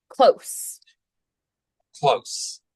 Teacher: think of getting through the CL fast um don't Linger on that L and get right to the O